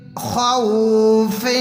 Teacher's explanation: خا کو پر پڑھیں گے، موٹا کریں گے، واو سے جوائن کریں گے.